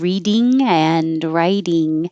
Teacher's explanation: you don't have to say the ing with the tongue coming high in the back